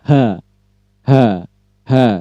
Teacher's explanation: sounds are produced when the air passes through the glottis as it is narrowed. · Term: glottal